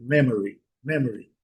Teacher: Então, as as demais sílabas geralmente elas são quase eh eh imperceptíveis, elas são muito fracas no discurso, na fala em inglês. Memory, o O às vezes pode ser até suprimido